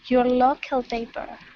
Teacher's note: you can really drop your voice down